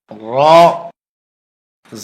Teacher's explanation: হরফটি জিহ্বার আগার পিঠ উপরের তালুতে লাগবে, মোটা হবে, বাংলা আকার প্রকাশ পাবে না।